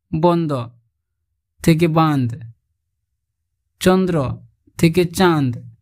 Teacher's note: শব্দ মধ্যস্থ নাসিক্য ব্যঞ্জন যেখানে লোপ পেয়েছে সেখানে পূর্ববর্তী স্বরের নাসিক্যী ভবন ঘটেছে